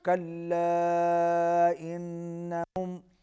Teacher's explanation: کلا انہم، کلا کے اوپر چھوٹی مد ہے، انہم غنہ ہوگا، آواز ناک میں جائے گی